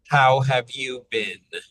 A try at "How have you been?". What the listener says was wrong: Now, for the last word, it's a little bit wide and spread, so think a little more rounded. Ben. How have you been?